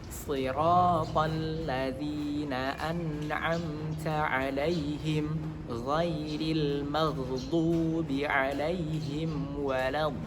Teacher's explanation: waladdallin kemudian bertemu dengan maddul lazim, yang mana mad lazim itu harus 6 harokat